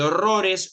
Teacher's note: En el caso de horrores, ro es la sílaba tónica, es una palabra graviollana.